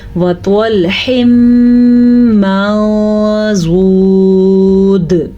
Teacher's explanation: ہم نون کی آواز کو چھپا کے پڑھیں گے اور غنے کے ساتھ پڑھیں گے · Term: اخفاء